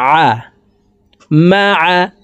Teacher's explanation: আইন হরফকে হলুকের মধ্যখান থেকে চাপ দিয়ে উচ্চারণ করে পড়বো